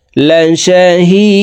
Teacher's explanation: হি 3 আলিফ টেনে দালকে সাকিন করতে হবে, কারণ মধ্যে আরজি 3 আলিফ টেনিয়া পড়িতে হয়।